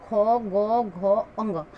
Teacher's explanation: ये सब कंठव्य हैं, यानी कंठ से, यानी कंठ से बोलने वाले अक्षर हैं। कंठ से बोलने वाले वर्ण है, अक्षर है, जिसे हम कंठ के सहारे से बोल सकते हैं।